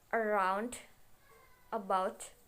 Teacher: the stress always falls clearly on the last syllables and the first syllables is weak